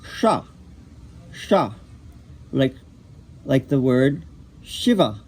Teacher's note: Except this one has a little accent over the S, which tells you that it is a palatal, which means your tongue goes to the soft palate